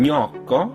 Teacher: an N made with the middle of your tongue against the roof of your mouth, and then I as in aio, which was an L made in that exact same spot, letting the air flow over the sides of your tongue.